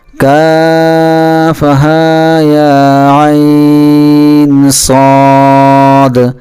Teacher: ہا اور یا پر کھڑا زبر ہے، اس لیے ہم اس کو صرف ایک الف کے برابر کھینچ کر پڑھیں گے